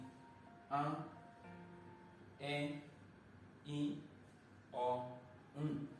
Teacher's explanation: tí ìró wọn bá jáde, ibi ìró imú òun ni yóò máa gbà jáde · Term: aránmúpè